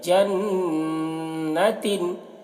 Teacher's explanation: लिसअयिहा राज़ियह फ़ी जन्नतिन आलियह, फ़ी जन, नून में गुन्ना करेंगे, जन्नतिन, और यहाँ पर भी तनवीन में इजहार हो रहा है तो तिन बोलना है